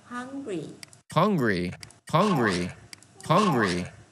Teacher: Các bạn nhớ chữ U mình đọc là ơ.